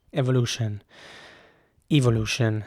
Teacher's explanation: e at the beginning is pronounced like an e evolution and the entire last part of the word the t-i-o-n is pronounced shin with a 'shin' sound